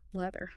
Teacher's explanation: Leather contains the voiced sound. Your tongue must physically protrude and vibrate between your upper and lower teeth.